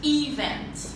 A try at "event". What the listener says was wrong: We place here the stress on the second syllable, not event or whatever. It's event.